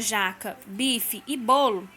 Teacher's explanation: na palavra jaca bife e bolo a sílaba tônica é a primeira sílaba da palavra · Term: paroxítonas